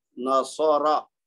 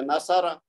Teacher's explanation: اس کو سین کی طرح یا سا کی طرح نہیں پڑھنا، اس کو صاد پڑھنا جو ہم نے سیکھا ہے مخرج کے ساتھ